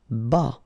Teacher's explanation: Final S not pronounced.